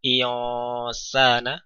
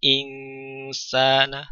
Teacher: Sod punya sifat isti'la, sifat tebal, sementara sin tidak punya sifat itu, sehingga berbeda, ya, akan berpengaruh pada bagaimana cara kita membaca nun sukun atau tanwin yang berada di sebelumnya. Insana tidak dibaca dengan menebal, misalnya iosana, tidak, karena sin tidak tebal